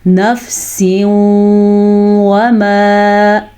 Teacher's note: یہ نون تنوین ہمارے پاس آگے نیچے، نون تنوین کے بعد یمون میں سے واو آیا ہوا ہے تو یہاں پہ ادغام ہو جائے گا. ادغام کا مطلب ہوتا ہے ان دونوں کو آپس میں ملا دیں گے، لیکن یہاں پہ غنہ بھی ہوگا واو کی وجہ سے. واو آنے کی وجہ سے غنہ ہوگا تو واو پہ ہی غنہ ہوگا. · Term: ادغام بالغنہ